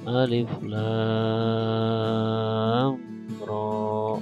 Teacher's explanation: Nah ini lamnya itu huruf musyabba, roknya itu huruf mukhaffaf. Maka roknya itu 2 harokat, lamnya 6 harokat. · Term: mad lazim harfi